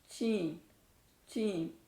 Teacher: شین بول کے دیکھیں اور اس تصویر کو یاد رکھیں. آپ بالکل اپنی زبان کا مڈل حصہ اوپر کے مڈل تالو کو لگائیں گے تو آپ کی آواز ساؤنڈ جو ہے اور مخرج بالکل صحیح چین چین.